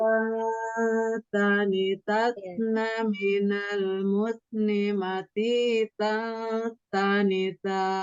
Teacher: dirasakan ujung lidahnya langsung menyentuh pangkal gigi seri atas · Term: ikhfanya tipis